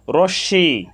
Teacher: হয়েছে রশ্মি এখানে তালব্য স এর সাথে ম ফলা যুক্ত হয়েছে তালব্য স এর সাথে ম ফলা যুক্ত হওয়ার কারণে তালব্য স এর উচ্চারণ সামান্য নাসিক্য হয়েছে